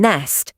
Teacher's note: Letter N said N, as in nest. Same as Turkish N, tongue tip behind the top teeth.